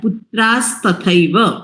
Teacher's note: વિસર્ગ નો સ થાય છે